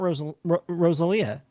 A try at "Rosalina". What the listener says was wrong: Rosalina. There's an N there.